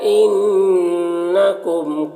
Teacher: نون مشدد غنہ ہوگا، میم میں زال شفا بھی ہو رہا.